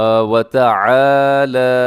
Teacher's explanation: لام کے اوپر کھڑا زبر ہے، جب کھڑا زبر ہوتا ہے تو آپ اس کو لمبا کر کے کھینچ کے پڑھتے ہیں، وَتَعَالَى، آئین کو بھی لمبا کرنا ہے، آئین کے ساتھ الف ہے، اور لام کو اسی لمبا کرنا ہے کہ لام کے اوپر کھڑا زبر ہے، وَتَعَالَى، وَتَعَالَى۔